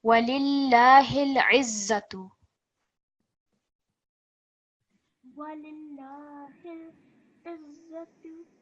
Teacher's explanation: we've got the za, which carries a shadda. So we need to put a lot more stress on there